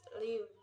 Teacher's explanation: The position of the mouth in the pronunciation the word live is that the tongue is in front and the lips are spread with the jaw closed. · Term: long vowel sound